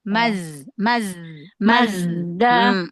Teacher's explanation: Suaranya, nafasnya jahar, nggak boleh hamas.